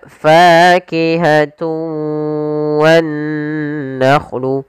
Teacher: idgham arti memasukkan dengan tidak sempurna ada yang kurang atau masih sedikit menyisakan suara nunnya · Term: Idgham naqis